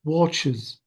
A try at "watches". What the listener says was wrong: Bravo, watches.